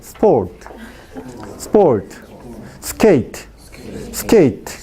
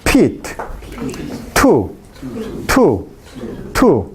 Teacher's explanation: t tiene una variante sin aspiración otra variante con aspiración